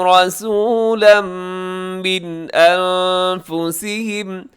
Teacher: رسولاً میں را موٹا ہے اور آخر میں تنوین ہے